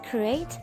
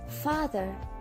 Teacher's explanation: it sounds like /ei/ when we say crate and it sounds like /a:/ when we say father